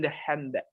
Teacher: most American English speakers do not pronounce the D in the hand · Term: deletion